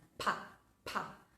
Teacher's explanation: Entonces, ¿qué va a pasar? Nosotros producimos el sonido pa con fuerza y vamos a notar que el aire golpea contra nuestra mano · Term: plosive pa, plosive